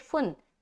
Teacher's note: یہاں پر ہم نون کی آواز کو ظاہر کر کے آگے نکل لیں گے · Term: اظہار کا قاعدہ